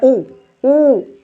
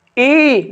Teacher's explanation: बोलते समय जब होठ वृत्त बनाए तो होता है वृत्तमुखी स्वर